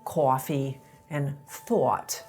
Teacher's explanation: NEW YORKERS RAISE THE VOWEL IN COFFEE AND IN THOUGHTS SO IT SOUNDS SOMETHING MORE LIKE COFFEE AND THOUGHT. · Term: RAISED THOUGHT VOWEL, raised thought vowel